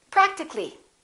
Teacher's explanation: we drop the a and we say practically